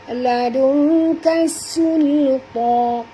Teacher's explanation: sul di sini jangan tebal. Kalau kita baca tebal jadi huruf sad, ini adalah huruf sin.